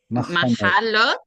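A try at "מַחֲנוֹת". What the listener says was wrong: Machanot. No, there's no lamed. It's a machanot. So machane is the singular, machanot is the irregular masculine plural.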